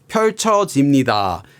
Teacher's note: He just has a falling intonation like where he says it just all goes down. And these things make his intonation sound calm and smooth.